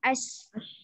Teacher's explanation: As itu dia ada dua. Dia ada safir sama dengan zai dan dia juga ada hamas. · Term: hamas dan safir